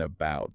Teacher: It's that lazy relaxed uh sound, right? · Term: schwa